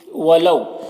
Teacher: یہاں پر واو لین ہے، اسے نرم آواز کے ساتھ جلد پڑھیں گے